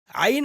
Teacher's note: हलक का बीच वाला जो हिस्सा है वहां से हम ऐन हा निकालना सीखेंगे